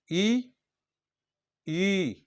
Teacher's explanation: आपका जीभ क्या बीच से उठ रहा है, राइट, तालु की तरफ जा रहा है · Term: तालव्य